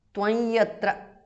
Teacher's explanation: Tvam yatra because of sandhi. Anuswara changes to the nasal of ya.